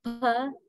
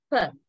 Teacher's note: you block the airstream with the two lips, upper lip and lower lip, because you tightly touch both lips now. When you say per, then only you suddenly release the airstream by drawing the two lips apart.